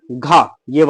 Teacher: तो घ का जो उच्चारण स्थान है वो आपका कंठ हो जाएगा।